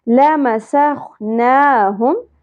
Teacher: لَمَسَخْنَاهُمْ خا پور حرف ہے, کھردرا ہے خراش کے ساتھ, نون کے اوپر کھڑی زبر ہے, ایک الف کے برابر کھینچنا ہے